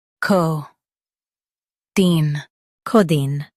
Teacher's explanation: Emphasize co and keep deen soft.